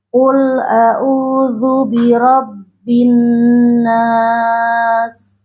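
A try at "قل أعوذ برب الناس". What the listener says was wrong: Bukan no. Ibu rada tebalnya. Nas.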